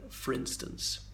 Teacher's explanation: the O in for in this case is elided. It sounds more like it's one word